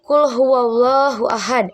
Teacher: Huruf dal di akhir dibaca qalqalah kubro atau pantulan besar saat berhenti.